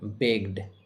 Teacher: গ সাউন্ড এর পরে ইডি রয়েছে, আর তাই ইডি এর উচ্চারণ শুধু ড এর মতো হবে, শুধু ড এর মতো হবে, বেগড।